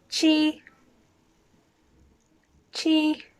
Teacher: again it's first tone flat